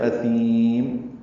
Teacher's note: سا کو لمبا کیا اور میم پہ ہونٹ بند کر لیے